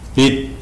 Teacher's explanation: Kemudian biddin bisa kita panjangkan karena din, bacaan din itu di akhir ayat. Jadi di situ namanya mad arid lis-sukun, mad arid lis-sukun, sehingga bisa dibaca biddin.